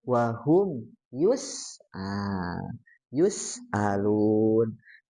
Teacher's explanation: kalau bertemu dengan sin ya e kita ditipiskan ya